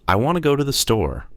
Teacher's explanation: the words want, go, and store are strong. The words I, too, and the are weak and fast. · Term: sentence stress